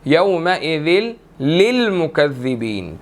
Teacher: ज़ा ने लाम के साथ मिलना है और आगे 2 लाम है